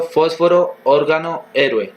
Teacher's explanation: palabras que llevan el acento en la antepenúltima sílaba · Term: palabras esdrújulas